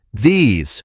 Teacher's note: in the word these, that S actually sounds more like a buzzing Z sound